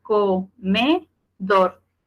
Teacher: es una palabra aguda porque tiene su sílaba tónica en la última, pero no la voy a acentuar porque termina en R.